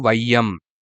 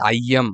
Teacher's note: ஐ எழுத்து, ஐ சார்ந்த எழுத்துக்கள் முதல்ல வரும்போது 1 1/2 மாத்திரை அளவு வந்து ஒலிக்குமாம். 2 மாத்திரை இதனுடைய அளவு.